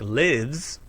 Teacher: in verbs like lives the s ending is pronounced z